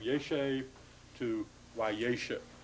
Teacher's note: just the shortening of the vowel because of the shift of the accent to the front of the word.